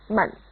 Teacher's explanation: It's a toneless tone, or a neutral tone, mun.